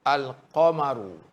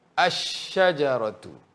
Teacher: Kalau dari segi bacaan, bezanya alif lam qamariyah jelas lam. Manakala dari segi bacaan dalam alif lam syamsiah lam tidak jelas.